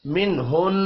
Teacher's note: نون ساکن کے بعد ہا ہے، اظہار حلقی ہوگا، غنہ نہیں ہوگا.